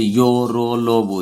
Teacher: इनका उच्चारण जीभ, तल्लू, दांत और होंठ के परस्पर सटने से होता है, किंतु कहीं भी पूर्ण स्पर्श नहीं होता। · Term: अंतः व्यंजन